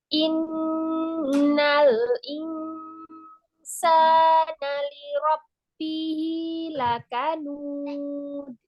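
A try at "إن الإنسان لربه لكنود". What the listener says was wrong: Nun tasydid lembut aja masuknya, jangan ditekan, biar gunahnya juga apa ya, huruf setelahnya jelas gitu ya. Setelah membunyikan gunah, huruf setelahnya itu jelas, jadi jangan ditekan. Inna, inna.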